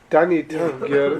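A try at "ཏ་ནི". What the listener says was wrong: Not da. Tani. It's not an English D.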